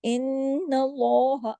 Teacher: नून पे तशदीद है तो क्या होगा, गुन्ना, इन, आवाज नाक में छुपेगी